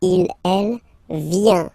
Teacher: Final T not pronounced.